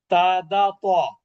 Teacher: এটা হলো জিহ্বার আগা, উপরের দাঁতের আগা